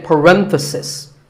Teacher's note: If you talk about just one bracket, you say parenthesis. The stress is on ren. If you're talking about both, the plural is parentheses.